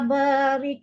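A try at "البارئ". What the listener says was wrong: Bukan barik, barik. Hamzah. Hamzah belakang tu bukan huruf kaf.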